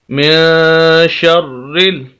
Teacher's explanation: کیونکہ را مشدد ہے، شد والا ہے، 2 مرتبہ پڑھا جائے گا، ایک مرتبہ شین کے ساتھ اور ایک مرتبہ نیچے جو زیر ہے اس کے ساتھ، اور پھر اسی زیر کو ہم ملائیں گے آگے لام کے ساتھ، کیونکہ لام ساکن ہے۔